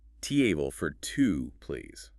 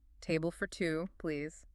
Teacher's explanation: The strong words are table and to. The words for and please are softer. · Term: rhythm